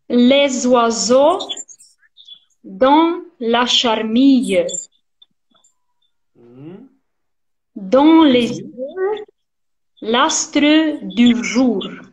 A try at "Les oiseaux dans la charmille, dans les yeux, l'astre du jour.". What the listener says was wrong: Be careful with charmille. The last sound, charmille. It's mm-hmm. close, not charmille. Charmille. Les oiseaux dans la charmille.